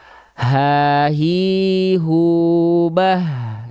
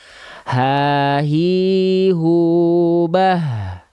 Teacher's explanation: Gak perlu dari dada karena nggak ada makhraj dada, teman-teman sekalian. Jadi hak besar itu dilafalkan dari pangkal tenggorokan kita.